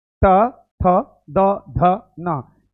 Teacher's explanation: दांत के पास आपका जीभ जा रहा है।